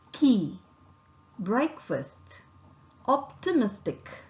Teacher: articulated with the back of the tongue making firm contact with a soft palate vocal cord does not vibrate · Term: K sound